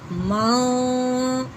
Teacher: من اظہار نہیں بلکہ اخفاء، ماں ذرا سا آواز ناک میں چھپانی ہے بس